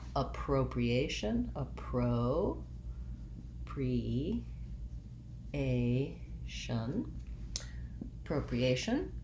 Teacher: Second to last syllable gets stressed. So we have the stress on the A-tion. That means our first letter A says schwa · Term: penultimate syllable stress